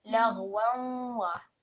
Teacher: we really need to hear a slight nasal sound come through when you join this waw with fathatain with the waw mushaddad. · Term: partial assimilation